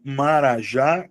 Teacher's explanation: Carijó tem a sílaba tônica no final. Marajá também tem a sílaba tônica no final.